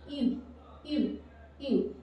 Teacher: You have to round your lips and say the English letter E and U together. English letter E and U together by rounding your lips and say U, U, U, and you will get the U letter sound of French.